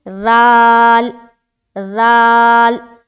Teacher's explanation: ذال جو ہے ایک باریک حرف ہے اور بغیر سیٹی والا حرف ہے، تو اس کو بغیر سیٹی کے اور باریک نرمی کے ساتھ ادا کرنا ہے